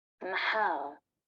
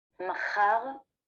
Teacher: a consonant merger in modern Hebrew between the pharyngeal fricative ha and the velar fricative cha. This distinction is mainly related with speakers of Middle Eastern and North African origin.